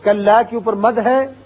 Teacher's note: کلا کے اوپر مد ہے چھوٹا مد مد منفصل 3 الف کھینچیے